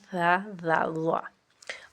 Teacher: حروف لثویہ وہ حروف جو ثلاثہ یعنی مسوڑوں کے قریب سے ادا ہوتے ہیں، یہ ہیں ثا، ذا، ظا۔